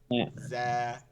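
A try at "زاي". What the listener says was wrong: আপনি জিহ্বার মধ্যখানটা লাগাইতেছেন তালুতে, এটা লাগানো যাবে না।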